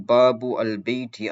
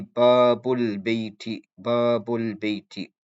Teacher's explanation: The first letter that will be pronounced when it comes to the second word is the Lam Sakin. The Hamza is still there, but in terms of pronunciation, it's not there. Meaning it's still there in terms of writing, but in terms of pronunciation, it's not actually used.